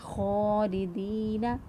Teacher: یہ پھر یا مدہ ہے، ایک الف کے برابر لمبا کیا